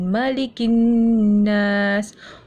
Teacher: Yang ada nun, yang ada tanda syaddah ni perlu didengungkan. Dengung maksudnya getaran.